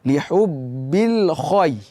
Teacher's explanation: Ada huruf kha. Huruf kha itu dibaca tebal, kemudian ketemu ya di depan.